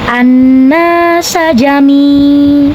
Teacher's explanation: Kemudian na hukumnya mad thaobi'i. Karena ada alif sebelumnya berbaris fathah, maka hukum nun panjangnya dua harakat